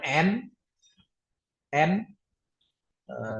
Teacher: kita ngucapinnya pakai ujung lidah ya kan N ujung lidah kita digerakkan ke langit-langit mulut gitu kan. N kalau M itu ngecapinnya pakai bibir.